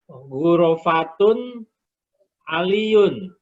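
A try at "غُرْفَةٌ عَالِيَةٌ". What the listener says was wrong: Bukan guro Pak, gur. Rohnya sukun.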